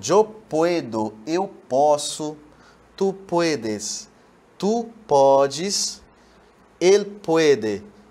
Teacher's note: A gente tem a mudança da letra O, da vogal O, para um ditongo, não é? O encontro de uma vogal mais uma semivogal, no caso aqui, we. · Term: irregularidade vocálica